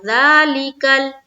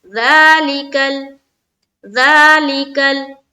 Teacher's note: کاف کو لام سے ملایا، کاف لام زبر کل۔ جب کاف کو ہم لام سے ملائیں گے تو اس بات کا خیال رکھیں گے کہ ہمارا قلقلہ نہ ہونے پائے، یعنی کہ آواز ٹکراتی ہوئی معلوم نہ ہو۔